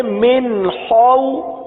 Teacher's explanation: خا حلق سے ادا ہوتا ہے، حلق کے اوپر والے حصے سے ادا ہوتا ہے. خا کو پورا ادا کریں گے کیونکہ یہ حروف مستعلیہ میں سے ہے، لہذا پڑھیں گے من خو.